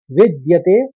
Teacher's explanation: शब्द है नासतो ये तो आराम से पढ़ लेंगे विद आपको पहले विद आघात लेना है द का फिर व्यते करना है विद्यते फिर भाव ये भी आसान है तो पहले चरण को